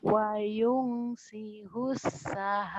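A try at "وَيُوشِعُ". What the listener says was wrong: Bukan sius. Wayung sius. Shin ini gede. Wa yunsyi'us sahaba thiqal.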